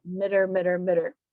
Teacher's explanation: So it looks like meter, but because these are unstressed syllables, you can really relax on that E, me sound, and it gets shortened to mitter